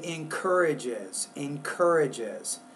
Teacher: you're kind of missing that syllable at the very end of that word